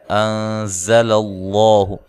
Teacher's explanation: زا کو زور سے ادا کرنا ہے، سیٹی کے ساتھ ادا کرنا ہے